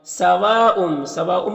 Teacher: سواء میں جو مد ہے مد متصل ہے، مد متصل کو 3 سے 4 الف کے برابر کھینچ کر پڑھتے ہیں